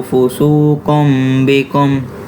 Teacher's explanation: قاف پہ جو 2 پیش ہیں ان میں جو نون کی آواز آئے گی اس کو میم میں تبدیل کر کے پڑھنا ہے